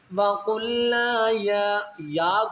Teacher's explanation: یا کو آپ نے 3 الف کی مقدار کھینچنا ہے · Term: 3 الفی مد